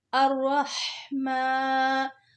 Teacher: जो बिस्मिल्लाह हा है उसको हलक के नीचे वाले हिस्से से निकालना है। अर्रहमा, जो हा है इसको हलक के दरमियान से निकालना है